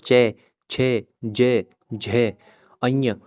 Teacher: जो आपकी जीभ है वो ऑटोमेटिक ही आपके तालवे पे टच होगी, आपके तालव्य पे टच होगी।